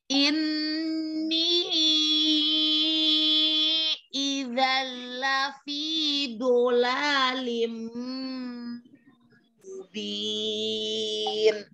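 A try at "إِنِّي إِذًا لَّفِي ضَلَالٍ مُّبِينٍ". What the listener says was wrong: Idzanya jangan terlalu tahan. Idzan, jangan terlalu tahan. Idza lafi, jangan. Di bola lim, jangan terlalu ditekan. Bola lim.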